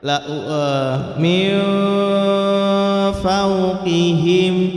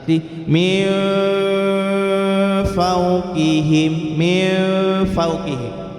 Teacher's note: Cara mengkomposisikannya adalah nun sukun atau tanwin kita lambangkan huruf n, kemudian nanti warna ataupun corak bacaan ikhfa-nya tergantung huruf di depannya apa. Kalau hurufnya fa, maka nanti suara yang dominan muncul adalah n dengan f atau v kalau dalam bahasa Latin.